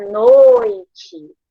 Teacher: Porque eu tenho o, que é uma vogal, e o i, que é uma semivogal. Então, noite é decrescente, porque a vogal, ela está soando mais alto quando eu falo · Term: ditongo decrescente